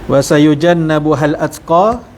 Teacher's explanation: Janna ada nun bersabdu wajibul gunnah, dengung dalam kadar 2 harakat.